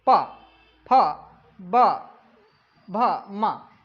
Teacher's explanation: आपके जो होठ है वो दोनों आपस में मिलते हैं तब जाके आपका उच्चारण निकलता है सही, तो इसे हम बोलते हैं ओष्ठ।